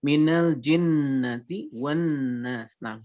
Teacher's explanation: Maka Syekh kemudian menyatakan asyaddu yang paling kuat matakun dalam keadaan digunahkan atau digunakan ketika mim dan nun bertasydid tersebut, dalam keadaan nun dan mim bertasydid maka gunahnya paling kentara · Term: gunnah